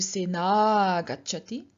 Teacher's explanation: with the a and a merging into one long a